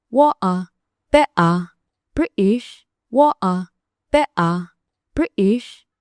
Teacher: gobolo ka mid ah UK sida London iyo agagaarkeeda, Cockney, Estuary, dadka qaar waxay ka tagaan dhawaaqa T waxayna u beddelaan glottal stop ama glottal stop. glottal stop waa marka aad si degdeg ah u xirtid cunaha neefmareenka, joojin gaaban oo cod ah sida o halkii aad ka odhan lahayd xarafka T.